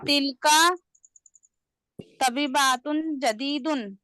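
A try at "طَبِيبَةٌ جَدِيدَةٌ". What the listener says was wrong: हाँ, देखो आप तभी बातुन कैसे पढ़े? तभी बतुन, जदीद। दतुन, दा कहाँ है यहाँ पे? आप क्यों अच्छा अलीफ क्यों पढ़ते हैं यहाँ पे?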